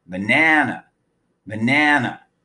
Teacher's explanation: a animal animal the word banana also has three syllables but this time the first and third vowels get reduced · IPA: /ǝ/